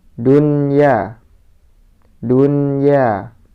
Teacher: nun sukunnya dibaca jelas karena bertemu dengan huruf ya dalam satu kalimat